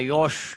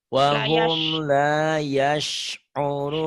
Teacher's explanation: Sinnya dibuka lebar, bukan dimonyongin.